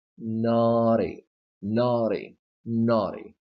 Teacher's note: So the stress is here. Well, since the stress is not to the right of T, you can pronounce this T with a flap T